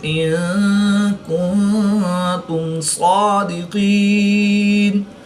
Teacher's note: نون ساکن کے بعد تا حرف اخفا میں سے ہے تو نون ساکن میں اخفا ہوگا